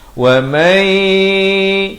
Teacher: Daripada wa man asalnya izhar tetapi dibacakan dengan idgham bi gunnah kerana nun mati bertemu ya.